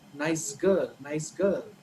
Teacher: nice ends with sa, and girl, the girl starts with g. But in the connected speech, right, when you say it together, the sa becomes za. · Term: Assimilation